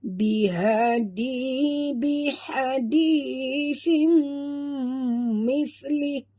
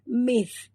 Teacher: Dia tak boleh bunyi mis. Kalau bunyi mis, jadi yang keluar ialah makhraj sin. Ini bukan huruf sin, ini huruf sa. Makhrajnya di hujung lidah.